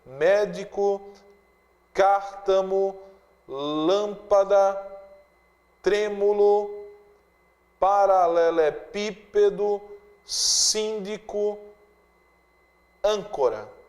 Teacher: Palavras proparoxítonas são aquelas que apresentam a sílaba tônica na antepenúltima posição